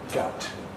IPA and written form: gʌʊt (goat)